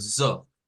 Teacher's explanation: Es parecido al zo del inglés. Un poquito vibrante la S, una S vibrante y un sonido O, como el del español.